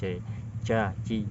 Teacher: Sering sekali huruf C ini muncul karena kita tidak menggunakan bagian tengah lidah, akan tetapi kita menggunakan ujung lidah dipertemukan dengan langit-langit bagian tengah. Inilah yang membuat hurufnya menjadi C.